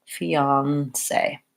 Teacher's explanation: I'm gonna lengthen on that last syllable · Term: stress on the last syllable